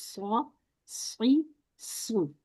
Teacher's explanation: start में सौ whistle की आवाज आएगी